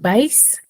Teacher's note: su mayor fuerza de voz está en la última sílaba por ese caso yo la tildo ya quedas claro sí es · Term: aguda